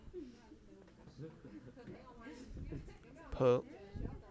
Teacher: similar to the English p, but with more air. The tip is choose your lips and release more air. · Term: strong P